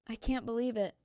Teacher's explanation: Say it with sadness, I can't believe it. Your voice drops at the end. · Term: intonation